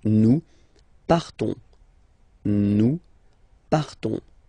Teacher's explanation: So classic ending ONS, you don't pronounce the S, you just have this on sound nasal